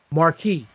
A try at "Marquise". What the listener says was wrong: You said Marquis, not Marquise.